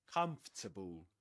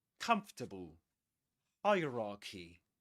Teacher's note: the main stress goes on the first syllable